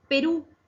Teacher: Porque se acentúa en la última sílaba. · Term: aguda